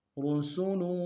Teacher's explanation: را کو موٹا ادا کریں گے، سین کی سیٹی باریک ہوگی